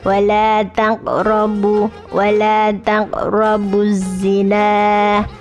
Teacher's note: Az-zina ini ada alif lam atau lam ta'rif. Lam ta'rif bertemu dengan huruf za, maka dimasukkan tidak terbaca. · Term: idgham syamsiyah